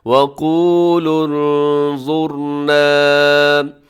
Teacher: را ساکن سے پہلے پیش ہے تو آپ نے اس را کو بھی موٹا پڑھنا ہے